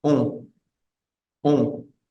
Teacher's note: Y cada vez que tengamos una O y una N, no vamos a decir on como en español, sino vamos a decir on, que es una vocal nasal, saldría el sonido básicamente enfocado en esta zona y sería on, on.